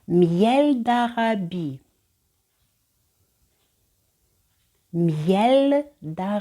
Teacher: вона з пересердя перетворюється на приголосний звук на звук й отже і перед голосною дає нам звук й